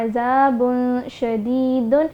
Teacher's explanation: اب با کے اوپر تنوین کی دو پیش ہے، تو تنوین کے بعد شین آ رہا ہے جو کہ حروف اخفا میں آتا ہے، تو ہم یہاں پر غنہ کر کے پڑھیں گے کس طرح عذاب شدید، یعنی کہ جو نون کا جو ساؤنڈ ہوگا وہ کلیئرلی پروناؤنس نہیں ہوگا، اس کو ہم واضح کر کے نہیں پڑھیں گے بلکہ ہم چھپا کے پڑھیں گے، غنہ کریں گے